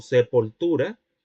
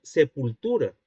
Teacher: El hablante estaría diciendo sepultura, empleando la semicerrada posterior, cuando debería decir sepultura, empleando la cerrada posterior. Esto es la vacilación de vocales átonas.